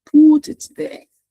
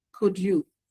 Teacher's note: some people use goose instead of the put vowel